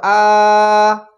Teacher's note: এটা খাড়া জবর মদের হরকত, এক আলিফ টান হচ্ছে।